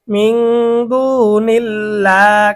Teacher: তাহলে এখানে আল্লাহ শব্দের ডানে জের, জের থাকার কারণে আল্লাহ শব্দের লাম চিকন। মিং দুনিল্লাহ, খারাপ জবরের কারণে কালিফ টান, হাজের হি, মিং দুনিল্লাহি।